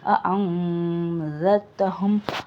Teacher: நுனி நாக்குலேருந்து இந்த ஜால் சவுண்டு வரணும்